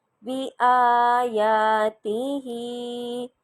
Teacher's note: با لمبا نہیں ہوا، آ لمبا ہوا، یا لمبا ہوا، پھر تا کو میں نے جلدی سے پڑھا اور ہا کو لمبا کیا۔